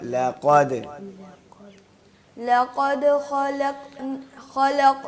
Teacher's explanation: काफ के साथ लाम को बारीक पढ़ना है